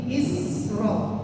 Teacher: sin harus mengalir, enggak boleh diputus. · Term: huruf rakhawah